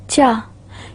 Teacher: in beginning we will feel a partial blockage, and then suddenly there is a release of airflow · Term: affricates